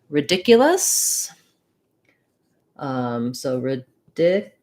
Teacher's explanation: Second syllable stress, which means that first vowel is either going to be a schwa or an I. It's probably going to be in the dictionary as an I sound, ridiculous.